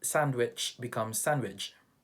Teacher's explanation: sometimes we have the cha sound change into ja sound